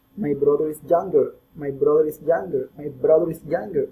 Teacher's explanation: Using the linking R, we must say my brother is younger, my brother is younger, my brother is younger. We are connecting the R sound with the vowel I.